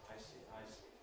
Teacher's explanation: the voicing switches on for the vowel, I, the diphthong, then switches off for the consonant, and then on again for the vowel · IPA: [ˈaɪsi]